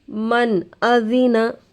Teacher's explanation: نون ساکن کے بعد حروف حلقی میں سے حمزہ آ کر ہے. نون کی آواز کو ظاہر کر کے بغیر غنہ کے جلد پڑھیں گے. اس کو اظہار کہتے ہیں.